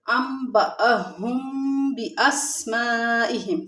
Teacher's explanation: یہاں پر انبأهم میں بھی یہاں پر اقلاب ہو رہا ہے، یعنی نون ساکن کے بعد با ہے تو یہاں پر اقلاب ہوگا